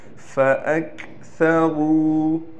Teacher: را کو موٹا بھی کرنا ہے اور را کے بعد واو کے آنے کی وجہ سے را کو ہم ایک الف کی مقدار کھینچ کر بھی پڑھیں گے